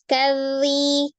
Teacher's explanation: Tasdidnya tidak boleh terputus, kazi. Tapi jangan ditekan kazi, jangan dinaikkan k-nya. Kazi sejajar. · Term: zal tasdid